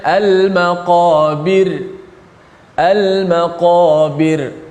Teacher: Al-maqabir, ra tu dimati dalam keadaan nipis.